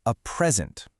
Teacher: Stress is on the first syllable.